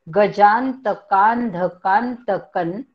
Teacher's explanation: गजांत पुढे आहे कांध आणि पुढे आहे पुन्हा कांत आणि मग क वर अनुस्वार आहे. त्या अनुस्वाराचा उच्चार न सारखा पुढे आलेल्या त या अक्षरामुळे. त थ द ध न, म्हणून क वरच्या अनुस्वाराचा उच्चार आपण न सारखा करणार.